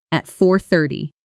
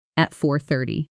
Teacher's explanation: The T softening into something closer to a quick D sound between vowels, a very common pattern in American English called flapping.